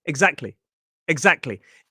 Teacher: Maybe I could just get rid of that T sound and make it exactly.